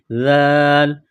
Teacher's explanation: ذال کو پڑھتے وقت زبان تھوڑی سی باہر نکالیں گے